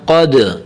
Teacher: دال کو تھوڑا سا ہلائیں، دال حروف قلقلہ میں سے ہے